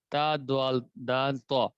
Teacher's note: زبان کی نوک اور سامنے کے دانتوں کی جڑ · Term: نطعیہ